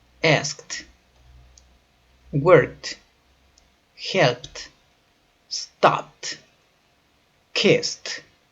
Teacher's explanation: Es decir, que cuando nosotros escribimos, en esta ocasión nosotros nos toca agregar ed, pero esto es la forma escrita. Pero cuando los pronunciamos en su forma pasada, el ed suena con un sonido de t.